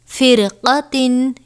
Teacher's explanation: را ساکن کے بعد حروف مستعلیہ میں سے قاف آیا ہے، لہذا ہم را کو پر کر کے پڑھیں گے